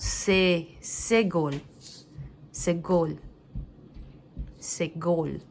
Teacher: o segol, ele já tem um som de E mais fechado